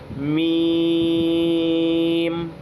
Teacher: दोनों ऊपर और नीचे के जो होठों का सूखा वाला हिस्सा है उन दोनों सूखे वाले हिस्सों को चिपका कर मीम को खींचा जाएगा। फिर वहीं पर ही मीम को खत्म कर दिया जाएगा। · میم کا مخرج ہے ہونٹوں کا سوکھا ہوا حصہ، میم جو ہے ہونٹوں کے سوکھے والے حصے سے نکلے گا۔ دونوں اوپر اور نیچے کے جو ہونٹوں کا سوکھا والا حصہ ہے ان دونوں سوکھے والے حصوں کو چپکا کر میم کو کھینچا جائے گا، پھر وہیں پر ہی میم کو ختم کر دیا جائے گا، جیسے میم۔